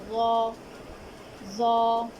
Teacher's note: ज़ौ को उसके मखरज से अदा करते हुए यानी ज़बान की नोक जब सामने के ऊपर के दांतों के किनारों से लगेगी तो ज़ौ अदा होगा, और ज़बान के आखिरी हिस्से को ऊपर की जानिब उठाएंगे तो ज़ौ मोटा अदा होगा